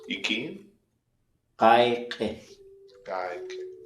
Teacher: It's short and high-toned all the time when it's command